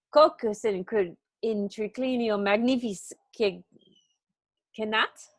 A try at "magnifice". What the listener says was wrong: Yeah, it's magnifique. I mean, that French is going to get you every time.